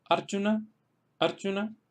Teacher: ejemplos en los cuales se acentúan en la primera sílaba porque la segunda sílaba es corta. Como es corta, pues tendríamos que pasar de la penúltima sílaba a la antepenúltima.